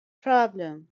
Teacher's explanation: it's a two syllable word and stress is on the first syllable